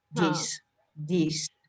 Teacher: the voiced this will often be pronounced like a letter D